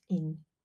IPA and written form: ɪn (-ing)